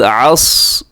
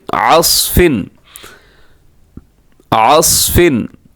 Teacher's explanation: عین زبر صاد عص, صاد کلکلہ نہیں ہونا ہے, صاد کو بچائیے گا کلکلہ ہونے سے